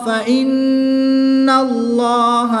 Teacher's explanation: نون مشدد میں غنہ کر کے پڑھیں گے، اس میں جلالت اللہ عز و جل کے لام سے پہلے حرف پر زبر ہے تو اس لام کو پر یعنی موٹا پڑھیں گے۔